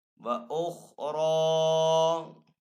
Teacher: را کے اوپر یہاں پہ زبر ہے تو را کو یہاں پہ پر پڑھیں گے